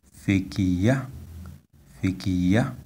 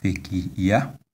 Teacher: You see, the tone is on the last vowel, A.